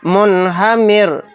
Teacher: تو یہاں پر بھی دیکھیے را ساکن سے پہلے میم کے نیچے زیر اصلی ہے، تو یہاں پر رائے ساکنہ کو باریک پڑھیں گے، پر نہیں پڑھیں گے. منہمر.